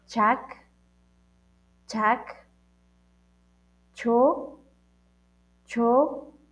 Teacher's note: este sonido sale desde la lámina, la parte de arriba de la lengua